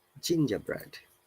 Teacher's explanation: remember that in gingerbread, the R is silent in British IPA